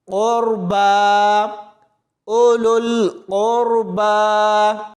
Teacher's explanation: قاف کو را کے ساتھ ملائیں گے تو را کو موٹا پڑھا جائے گا